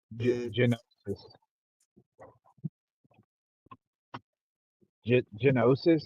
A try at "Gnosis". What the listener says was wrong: It's gnosis. The G is silent.